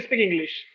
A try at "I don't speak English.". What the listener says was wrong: So every time you are saying the verb speak, I can hear you saying is speak. It is not is speak. It is speak. Start with sir sound and not is.